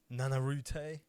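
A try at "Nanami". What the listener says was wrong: No. He's got 1 extra syllable, so it's Nana.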